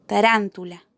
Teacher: Tarántula es una palabra que se acentúa en la antepenúltima sílaba, por lo que la consideramos una palabra esdrújula.